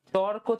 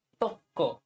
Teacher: যখন রকার লোপ পেয়ে তারপর ব্যঞ্জন ধ্বনি ডাবল হয় তখন এটা রকার লোপ।